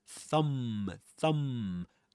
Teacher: You only pronounce the m sound at the end.